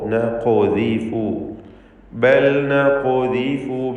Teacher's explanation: ഖാഫിൻ്റെ സുക്കൂൻ ഖൽഖല സുഗ്റ നൽകി ഹറക്കത്ത് പോലെ ശബ്ദം ചലിപ്പിച്ചുച്ചരിക്കേണ്ടതാണ്. ഖാഫിന് തഫ്ഖീം കൊടുക്കണം, തടിപ്പിച്ച് സ്വരഭാരത്തോടെ ഖാഫിനെ ഉച്ചരിക്കുകയും വേണം.